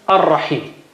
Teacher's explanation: So when you attach them, lam loses its sound, so its sign is gone. So al, because lam is conflicting with r, so lam says take my sound and give it to ra.